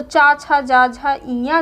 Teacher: देखो इसमें क्या होता है कि वायु जो होती है वो घर्षण के साथ में बाहर निकलती है, संघर्ष के साथ में बाहर निकलती है, इसीलिए इसको स्पर्श संघर्षी कहते हैं।